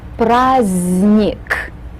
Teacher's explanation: Right in the middle, we have the letter D, but this letter is mute. It's not pronounced. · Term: mute letters